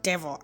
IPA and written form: ˈdevl (devil)